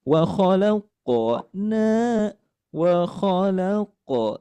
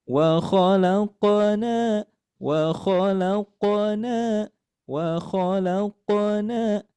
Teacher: ketika melafalkan qof ini yang mati atau berharakat sukun, maka dibacanya mengalir